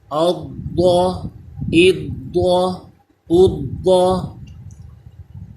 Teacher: ضاد یہ حروف مستعلیہ آ گیا، اس کو پر پڑھیں گے،